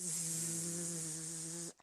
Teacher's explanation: Você percebeu, se você colocar a mão aqui, ó, zzz, a sua corda vocal está vibrando. Então, é vibrante. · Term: som vibrante